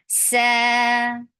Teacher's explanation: give snaky sound for fatha, open your jaws and make it 2 count long